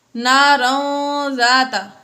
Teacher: وما کسب سیصلی نارا ذات لہب، نارا ذات، یہاں پر تنوین کے بعد ذال آ گئی حروف اخفا میں سے، اس لیے یہاں پر اخفا کیا یعنی غنہ کر کے پڑھا